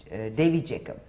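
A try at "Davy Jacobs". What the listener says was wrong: Yeah, with an S at the end. It's close enough though.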